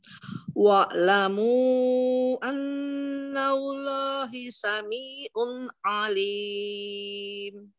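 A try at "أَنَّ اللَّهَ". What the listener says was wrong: Annallaha Umi, bukan annallahi. Umi, Annallaha.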